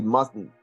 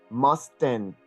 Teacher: you're not supposed to open your mouth and make an explosive t with an E ending sound that's not the way it's supposed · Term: nasal T sound